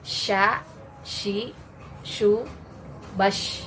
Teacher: salah satu sifatnya adalah at-tafashi, yaitu penyebaran angin di dalam mulut